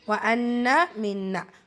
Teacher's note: நூன் முஷத்ததா நூன் முஷத்ததா ரெண்டு இடத்துலையுமே நூன் முஷத்தா, ரெண்டு இடத்துலையுமே குன்னா செஞ்சு ஓதணும். நூனில் அலிஃப் மத்தா இருக்குது, 2 ஹரக்கத்தளவு நீட்டம் கொடுக்கணும்.